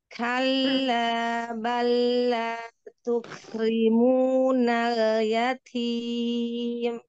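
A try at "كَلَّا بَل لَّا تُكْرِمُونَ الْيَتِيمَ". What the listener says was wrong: Masyaallah, barakallahu fiik, hamsnya bagus. Nanti latihan di huruf tebal jangan pakai bibir. Ya, bibirnya nggak boleh ikut goyang. Yang menebalkan adalah pangkal lidahnya.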